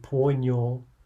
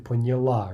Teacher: stress jumping back in the past tense onto a prefix